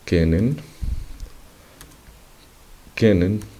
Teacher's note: Es que la letra que está acentuada, en este caso es la palabra kennen, que es conocer, el acento, como vemos, recae al inicio de la palabra kennen. Esta palabra, al escribirla, y que nosotros representemos este acento dentro de la palabra, lo que se utiliza es la doble consonante seguida de la vocal que es acentuada.